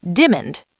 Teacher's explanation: The CEO, a very fastspeaking American, asked Maria, "Can you get me the diamond report by Tuesday?" But he didn't say diamond. He elided the middle syllable.